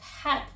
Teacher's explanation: the word cat can be pronounced as cat with the unaspirated K and unreleased T